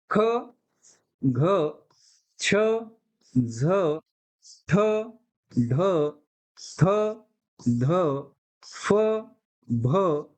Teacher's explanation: ज्या ज्या वर्णाचा उच्चार म्हणजे शेवट ह सारखा होतो त्या त्या वर्णाला सुद्धा काय म्हणतात महाप्राण व्यंजन असं म्हणतात महाप्राण वर्ण असं म्हणतात मग ते कोणते आहेत ते आहेत बघा